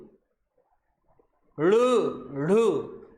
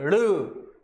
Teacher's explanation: आपकी जुबान उठेगी और मूर्धा को स्पर्श करेगी, ऊपर उठेगी जबान